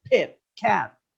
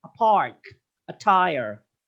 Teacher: stops they are plosives they are aspirated because they are produced with an accompanying forceful expulsion of air all voiceless stops p t k are aspirated in initial position